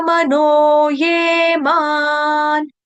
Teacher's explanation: मैया वेश्य मनो ये मान, मनो ये मान, नो जो है वो भी दीर्घ है, नो, ये जो है ये भी दीर्घ है, ये, उसके बाद माँ जो है ये भी दीर्घ है, माँ, ठीक है। उसके बाद माँ के ऊपर जो अनुस्वार यानी कि बिंदी, उसका उच्चारण करेंगे हम हलंत न के साथ